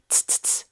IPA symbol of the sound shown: ts